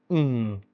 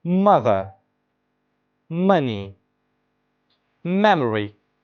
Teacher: during the production of the sound, the lips close. Air does not escape through mouth. Instead of the air flows through the nose and that creates a nasal resonance. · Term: nasal sound